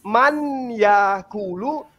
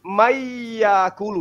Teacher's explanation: Wa minan nasi, ya, nah betul, wa minan, maksud enggak itu mayyakulu, betul, nun mati yang tadinya harusnya man yakulu berubah menjadi mayyakulu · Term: idgham bi gunnah